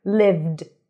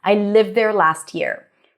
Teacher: Lived d sound because the v is voiced.